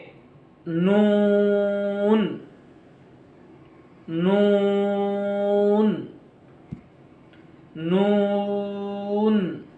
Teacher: इसको पढ़ेंगे नून नून नून। जबान का किनारा सामने के ऊपर के दांतों के मसूड़ों से लगाकर अदा होता है।